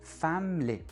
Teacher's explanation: Vous remarquez au passage que parfois quand on a une syllabe au milieu du mot qui est réduite, on va avoir tendance à carrément l'effacer.